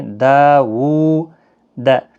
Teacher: دا الف مدہ ہے، واو کے اوپر الٹا پیش ہے، دونوں کو ایک ایک الف کی مقدار کے برابر کھینچیں